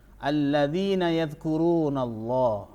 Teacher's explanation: Lafal Allah dibaca tebal karena sebelum lam jalalah ada huruf fathah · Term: lam jalalah tafkhim